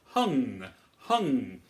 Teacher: you can feel the tongue come up to the palate so that we are feeling that sense of height in the back of our mouth